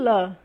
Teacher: é uma consoante lateral alveolar